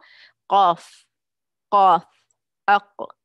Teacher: पीछे से ज़ुबान को लगा रही हूँ, मेरी मखरज है, और आगे से मैं ज़ुबान को हल्का सा उठा रही हूँ, ये मेरी सिफात है ज़ुबान की। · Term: इस्तिआला